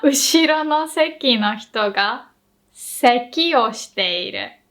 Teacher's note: the first seki is high-low, seat, while the second one was low-high, seki, cough. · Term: pitch accent